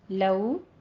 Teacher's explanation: لو واولین ادا کرنا ہے دونوں ہونٹوں کو ناتمام گول کرتے ہوئے، یعنی مکمل بند نہیں کرنا گول کر کے، آپ نے ناتمام رکھنا ہے ان کو.